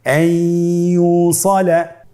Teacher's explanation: ইয়া হরফটি হলো ইদগামে বাগুন্নার হরফ। তাহলে নুনকে আমরা পরবর্তী হরফ ইয়ার সাথে মিলিয়ে গুন্নার সহিত পড়ব